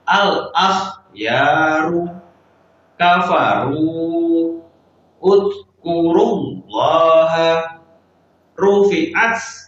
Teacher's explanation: Ini adalah contoh dari ro yang bertanda baca dhammah, maka dibaca tebal. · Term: ro tafkhim